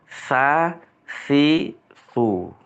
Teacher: ujung lidah mengenai ujung gigi depan atas. Tapi jangan sampai dikeluarkan semua lidahnya ya.